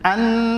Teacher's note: number 1 आवाज नाक में होना, नंबर 2 एक अलिफ की मिक़दार खींचना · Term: गुन्ना